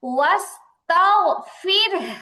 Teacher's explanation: واستغفر আচ্ছা এখানে দেখেন র সাকিন, হ্যাঁ র সাকিন তার ডানে জের আসছে এবং বামে ওই 7 হরফের কোনো হরফ নাই, মুস্তালিয়ার কোনো হরফ নাই, রটা পাতলা হবে।